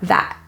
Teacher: The T in that at the end is pronounced as a glottal T, so instead of releasing that, it is a pressure in your glottis or a pressure in your throat that stops there, that.